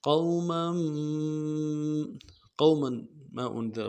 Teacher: میم کو اگلے میم کے ساتھ ملانا ہے